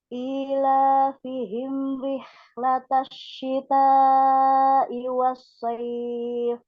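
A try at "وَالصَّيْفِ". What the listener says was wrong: Was-sayf, jangan was-sayf. Nah, nggak boleh kasar ya. Lembut ya, pelan. Sayf. Gitu.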